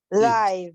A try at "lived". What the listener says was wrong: Lived. Lived. Final D in pronunciation. Lived.